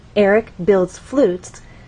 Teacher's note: word that will be the point where the melody changes so overall our voice is going to stay here and then drop down on flutes our final content word and flutes has only one syllable so we need to slide · flutes has only one syllable so we need to slide down as we say that one syllable our voice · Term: falling intonation